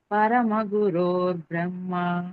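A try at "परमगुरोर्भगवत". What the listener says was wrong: బ్రహ్మ లేదు మాతాజీ, పరమ గురోర్భగవత.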